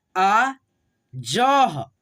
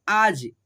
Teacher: विसर्ग को हम लोग ह के रूप में उच्चारण करते हैं